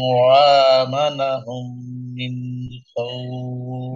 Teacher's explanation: নুন সাকিনার পরে ইজহারের অক্ষর খ আসছে স্পষ্ট করে পড়বেন, আর এখানে ওয়াকফ করলে তিন আলিফ টেনে পড়তে হবে এখানে, আর এখানে সাকিন হবে।